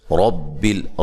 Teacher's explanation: را کو موٹا ادا کریں گے، را کے اوپر زبر ہے، را کے اوپر زبر یا پیش ہو تو را کو موٹا پڑھا جاتا ہے۔